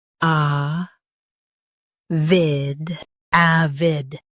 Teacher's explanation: Stress a v and keep id quick.